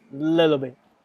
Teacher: in American accent, usually we turn the T, in this case, T into D